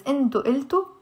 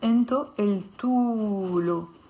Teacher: this wow alif at the end of the verb in the Lebanese accent is pronounced as a O because it's at the end. But when I add plus lo here, it's no more at the end of the word.